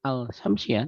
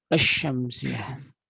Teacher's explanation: alif lam syamsiyah, lamnya tidak terbaca asy-syamsiyah, bukan al-syamsiyah tapi asy-syamsiyah.